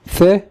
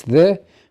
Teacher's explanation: Th, voiceless. The, voiced.